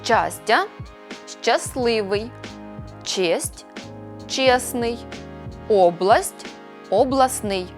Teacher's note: у групах приголосних с т л с ТН випадає Т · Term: спрощення